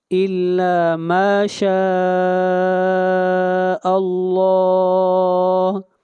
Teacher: شاء کے اوپر مد متصل ہے، اس مد کو 3 الف کے برابر کھینچ کر پڑھیں گے